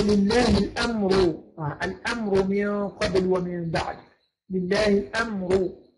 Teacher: يبقى الراء هنا مضمومة يبقى تفخم